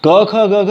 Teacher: क ख ग घ अंग आपका कंठ है, जो सबसे पहले कंठ से शुरू होता है नीचे से, फिर इसके ठीक ऊपर आएंगे तो आप देखेंगे तालु स्थान की जगह दी गई है, तालु स्थान को जगह दी गई है, यानी कि उसमें जो वर्ग रखा गया है वो च छ ज झ य। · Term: कंठ स्थान